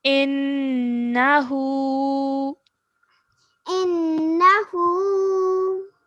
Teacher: So at least 2 seconds should be given to this noon ghunna sound.